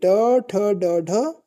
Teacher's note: ट ठ ड ढ ये जो है ये मूर्धा से बोली जाती है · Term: मूर्धन्य ध्वनि